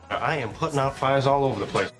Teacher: first syllable of over also stressed